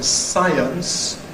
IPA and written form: ˈsaɪəns (science)